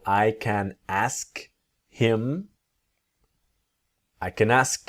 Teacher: native speakers don't always pronounce the letter H when we speak quickly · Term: him to im